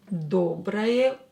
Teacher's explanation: O is not stressed. We will pronounce it as a.